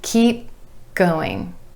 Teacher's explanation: we're holding that final P sound and going straight into the G.